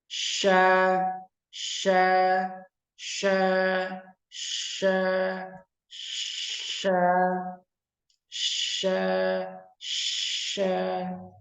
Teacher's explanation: Nah, huruf shin. Tengah lidah, kemudian tengah langit-langit atas.